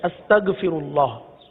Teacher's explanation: تو اب اس میں عموماً جو ہے غین کے بجائے گاف کی ادائیگی کرتے ہیں، استغفر اللہ، استغ نہیں، غین ہے حلق کے اوپر والے حصے سے ادا ہوتا ہے، غین کو پر ادا کرتے ہیں۔ او پڑھ لیجئے، او استغ، او استغ، او حمزہ غین زبر او، استغ، صحیح ہے؟